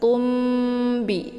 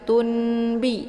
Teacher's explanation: Ya, tanwin bertemu dengan huruf ba dinamakan dengan iqlab ya. Mana iqlab itu membalikkan bunyi nun mati atau tanwin ke dalam bunyi mim